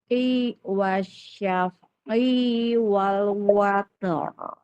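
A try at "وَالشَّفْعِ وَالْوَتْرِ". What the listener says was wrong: I-nya jangan itu mah panjang. I-nya. Jangan fokus ke ujung ya.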